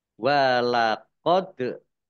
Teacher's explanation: dal sukun bacaan qalqalah dibaca memantul, ditampakkan pantulannya